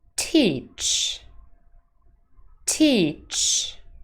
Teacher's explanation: contains a voiced consonant true or false teach teach false because t is unvoiced and the final consonant is also unvoiced